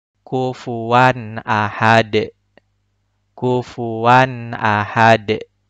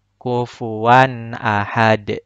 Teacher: Huruf dalnya harus memantul. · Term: qalqalah